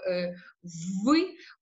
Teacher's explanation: При цьому ми повинні дихати на губи. Дихання струмень повинен бути спрямований саме на щілину між губами і верхніми різцями. · губа підтягується до верхніх різців. При цьому ми повинні дихати на губи.